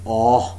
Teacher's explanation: No contact being made between the tongue and the upper molars. The jaws are wide open and there is slight open lip rounding. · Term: monophthong oh